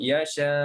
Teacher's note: Kita tashilkan beserta raum. Kita bunyikan sedikit hamzah tu dalam keadaan tashil. Panjangnya 6 atau 2. · Tashil sebutan antara hamzah dengan mat. Bukan dia duduk antara hamzah dengan mat, maknanya makhraj dia bukan makhraj yang seperti makhraj huruf hamzah ataupun mat.